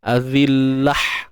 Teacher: Untuk ta marbutah, bila kita matikan dia akan dibunyikan dengan huruf ha simpul, bukan ha pedas.